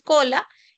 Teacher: tiene el valor de la oclusiva velar sorda